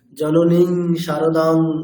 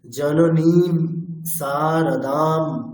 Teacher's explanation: অনুস্বার যেখানে যেখানে আছে সেখানে সেখানে মকারের মত করে উচ্চারণ করতে হবে আচ্ছা স্যার বিসর্গ মানে হ তাইতো বিসর্গ মানে হ অনুস্বার মানে